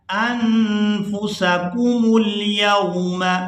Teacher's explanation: मीम को हमने पेश देकर लाम साकिन के साथ मिलाना है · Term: वसल की सूरत